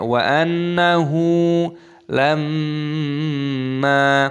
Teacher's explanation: mim tasdid dibaca gunnah berdengung dan mimnya dibaca panjang, ada tanda alifnya matobi'i.